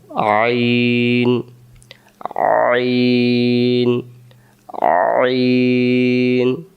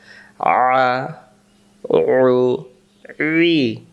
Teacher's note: আইন অক্ষর হলকের মধ্য থেকে একটু চেপে পড়তে হয়। হলক মানে গলা।